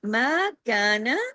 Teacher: کا کو دو حرکات، نون کو ایک حرکت